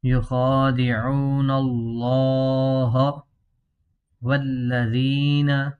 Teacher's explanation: ناظرین توجہ کریں، یہاں دیکھیں کھڑا زبر ہے، اس کو لمبا کرنا ہے، واو مدہ ہے اور لفظ اللہ کا لام موٹا ہے، اس کو موٹا پڑھیں گے